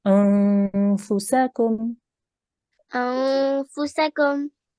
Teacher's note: So when you say this section here, you need to make a nasal sound when you join to the noon